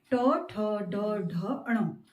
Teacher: ट जो तालु से थोड़ा आगे वाला हिस्सा है वहां पर मूर्धा है, इसे मूर्धन्य भी बोला जाता है, क्योंकि जब हमारी जीभ इनके उच्चारण में थोड़ा मुड़ती है इसलिए इसे मूर्धा या मूर्धन्य बोला जाता है, इन वर्णों को भी। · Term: ट वर्ग